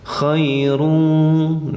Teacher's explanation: Ya sukun sesudah patah bacaannya di ayun saja, tidak boleh dipanjangkan